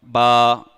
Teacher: با دونوں ہونٹوں سے ادا ہوتا ہے, دونوں ہونٹ ملتے ہیں